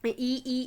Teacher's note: ए दांतों को टच कर रहा है ना आपको, तो यानी कि जीभ का आगे वाला हिस्सा जो है वो काम कर रहा है